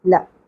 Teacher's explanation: لام زبر لا، مختصر رکھنا ہے، زیادہ نہیں کھینچنا۔